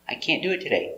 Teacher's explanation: You don't hear any T.